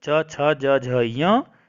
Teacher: दूसरे में हमने पढ़ा था इचु यशा नाम तालु, तो ई और च वर्ग च छ ज झ य, फिर य और फिर शेर वाला श, इन सब का उच्चारण स्थान क्या होगा हमारे पास, तालु होगा